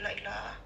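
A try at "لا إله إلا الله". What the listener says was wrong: La ilaha illallah mbak, jangan dipotong.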